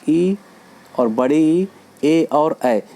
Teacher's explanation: तो अग्रभाग से जो स्वर बोले जाते हैं उनको हम अग्र स्वर बोलते हैं, जैसे ई और बड़ी ई, ए और ऐ, ये चारों अग्र स्वर कहे जाते हैं।